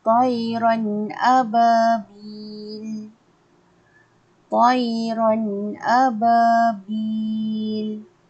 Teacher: Ustazah bacanya dengan keadaan jelas dan nyata tanpa dengung. Maksudnya kita baca jelas, dengar bunyi huruf tersebut. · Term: izhar halqi